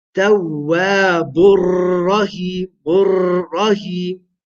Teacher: the takreer is too much, it's excessive. This destroys the beauty of the Quran, and it is attacking the minor, the Yahm al-Khafi.